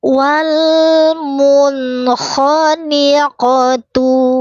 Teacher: Wawnya sapatain, wajib monyong dulu. Monyong dulu baru senyum. Lam sukunya terang jelas, jangan wale.